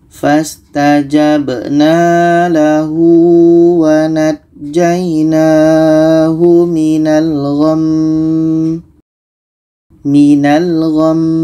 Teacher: Jadi kita dengungkan mim ini baru matikan. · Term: mim tasydid